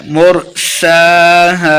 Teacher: سین کے اوپر کھڑی زبر ہے تو اس کو 2 حرکات لمبا کرنا ہے۔